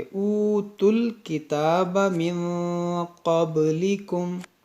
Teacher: واو اور یہ الف نہیں پڑھیں گے، اس تا کو لام سے ملائیں گے